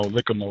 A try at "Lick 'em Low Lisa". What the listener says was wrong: It's Lick 'em Low Lisa is the name of the song. Now, it sounded like you're saying Lick 'em Mole. Lick 'em Low Lisa. Lick 'em Low Lisa.